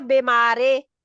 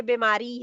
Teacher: री जी पढ़ते हैं हम, रे नहीं पढ़ते